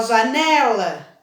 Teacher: o que eu falei com mais força esse é um né então janela o né é a sílaba mais forte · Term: sílaba tônica